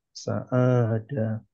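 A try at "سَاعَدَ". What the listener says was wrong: Jangan ketukar, hati-hati. Jangan ketukar. Masih ketukar dengan apa? Ya? Yang panjangnya sa-nya.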